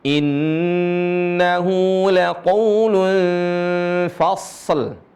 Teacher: Dialirin suaranya, huruf shad dialirin. Karena dia termasuk huruf yang rokhawah, mengalir.